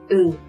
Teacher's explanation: L'une est IN, qui s'agit de la consonne finale, et sonne UN. C'est aussi un son nasal que l'air passe à travers votre nez.